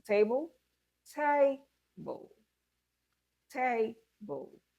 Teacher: stress the first syllable only and do not give prominence to the second syllable